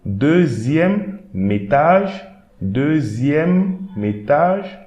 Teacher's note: Now here, we are not going to pronounce this E, but the M and the E of the next word will create a liaison also. So I'm reading the first word alone, then I'm adding this M to the beginning of the next word.